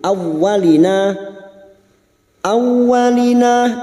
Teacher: huruf wau yang bertasdid hanya masuk tanpa mendengung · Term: Idam bilaguna